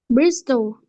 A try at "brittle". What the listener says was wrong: No S. No S. Brittle. Brittle.